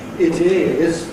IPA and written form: ɪt ɪz (It is)